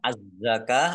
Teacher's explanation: alif lam syamsiah karena tidak dibaca langsung masuk ke huruf berikutnya yaitu Za ditandai zanya ada tasdidnya znya dibaca ka fathah berdiri Mad thii